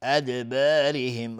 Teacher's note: ادبارهم را هم ترقیق است چون کسره داره.